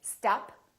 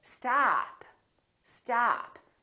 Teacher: your tongue touch your bottom teeth like this ah ah and this vowel is usually longer than most people who are non-native speakers tend to make it